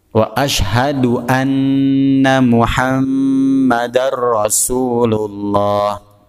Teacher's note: Nun bertasydid, mim bertasydid ini dihukumi gunnah, maka harus berdengung.